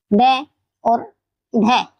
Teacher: जिन व्यंजन वर्ण को बोलते समय जीभ झटके के साथ ऊपर से नीचे गिरती है उसे उत्क्षिप्त व्यंजन कहते हैं।